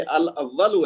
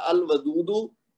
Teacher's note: اب اس کا ال لام بولنے میں بھی آ رہا ہے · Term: حروف قمری